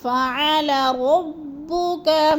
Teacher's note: را کو تھوڑا سا پر کر کے پڑھیں گے اور با کو جماؤ کے ساتھ سختی کے ساتھ پڑھیں گے